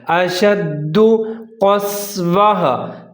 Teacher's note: کالحجارۃ او اشد، او یہاں پر واو ساکن اور اس سے پہلے حمزہ دونوں کو ملا کر پڑھنا ہے اور جہاں پر آپ نے ہونٹ گول کر لینے ہیں۔ او اشد، دال مشدد ہے، شین کے ساتھ ملا کر پڑھنا ہے اور مضبوطی کے ساتھ پڑھنا ہے